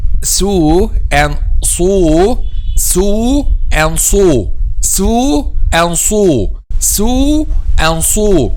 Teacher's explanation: Okay, the difference between them is just heaviness and lightness, which means when we pronounce a sin, the back of the tongue is not raised, and when we pronounce a sad, the back of the tongue is raised. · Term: al-isti'la or al-istifal